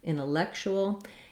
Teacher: Again, we have an vowel, red tent vowel, intellectual. And the C says the K sound here, and then this TU says a CH sound